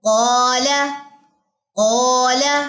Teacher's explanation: قا الف کے ساتھ آیا تو یہ اب الف موٹا پڑا جائے گا، یعنی کہ اقصی لسان اٹھے گی، لیکن ان میں انفتاح کی صفت بھی پائی جاتی ہے، یعنی کہ زبان کا درمیان تالو سے جدا رہے گا، جیسے ابھی ہم ڈائیگرام میں دیکھ کر آئے ہیں۔ · پیچھے سے اقصی لسان اٹھ رہی ہے لیکن وسط لسان میری تالو سے نہیں چپکی